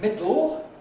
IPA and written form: ˈmɪdɫ (middle)